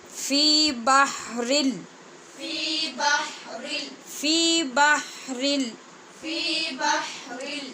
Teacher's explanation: آگے لام ہے حروف یرمالون میں سے، جس میں بے غنہ ادغام ہوتا ہے، جہاں پہ غنہ بالکل نہیں ہوتا، اس لیے بحرل پڑھا جائے گا.